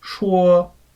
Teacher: So the first tone is high and flat. You start high and flat and you keep it there.